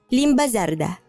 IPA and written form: ˈlimba ˈzaɾda (limba sarda)